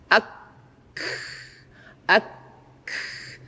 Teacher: dengan cara tertahan dulu suara yang mau diucapkan, baru setelah itu baru dikeluarkan nafasnya. Ak, ak, sehingga suara nafasnya memang sangat terasa kentara. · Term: sukun